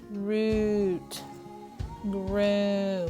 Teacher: All right, notice how your mouth is forming your lips are puckered out, and you are really putting an ooh, long U sound on that